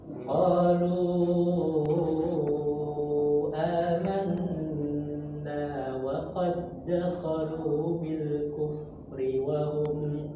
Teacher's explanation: Jadi di sini perhatikan di mad jaiz munfasil itu usahakan panjang Pak empat atau lima harakat ya.